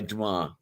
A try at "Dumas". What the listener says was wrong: Well, but see there, you just said it, Dumas. Right, it's not Dumas. You don't pronounce the S.